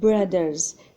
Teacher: brothers فهي voiced لأنها كتعطينا حرف الذال وكتنطق من الحنجرة.